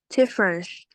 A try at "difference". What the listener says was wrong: Difference. This is not sh, not she. This is C. C, not sh. She, no. C. Whenever you say CE, it's very easy. Just like a C. C, not sh, no. CE, seed.